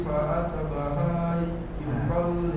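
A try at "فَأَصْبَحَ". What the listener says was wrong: Masih ada haknya fa asbaha, berarti ada panjang fa asbaha harusnya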